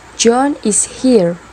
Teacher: with falling intonation is a statement